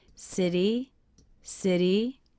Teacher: how my voice goes up at the end of the word city city city that's because of a comma · One of the first things I notice is how my voice goes up at the end of the word city